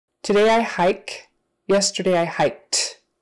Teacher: that K is unvoiced so the Ed becomes an unvoiced T